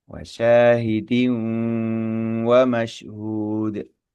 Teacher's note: kasr tanwin bertemu dengan huruf wawu di situ hukumnya adalah idgham bighunah ya idgham bighunah mendengung · suara masuk ke hidung ya tuh tuh dan ditahan lama · Hukum bacanya adalah idgham bi gunnah. Idgham artinya langsung nempel ke huruf wawu, huruf tujuan. Kemudian bi gunnah disertai dengan gunnah.